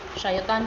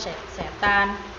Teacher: Syaiton menjadi setan karena proses monoftongisasi yang mengubah vokal rangkap ai menjadi vokal tunggal e